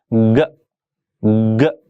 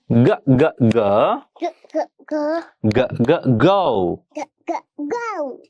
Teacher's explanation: This is a voiced consonant sound, and you can hear it at the beginning of the word go, and at the middle of the word begin, and at the end of the word bag. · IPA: /g/